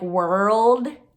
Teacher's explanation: the w sound is on your lips the l sound your tongue is up in the front and the d sound is in the same position as t